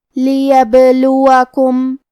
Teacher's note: قلقلہ کا معنی ہے حرف ساکن کو ہلانا، تو ہم با کو ہلاتے ہوئے یہ کلمہ کو پڑھیں گے